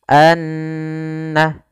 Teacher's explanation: suara annya kita tahan Anna baru dilepaskan sehingga dipanjangkan sekedar kadar dua harakat lebih sedikit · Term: ghunnah